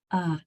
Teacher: the third o is going to say uh that lazy schw sound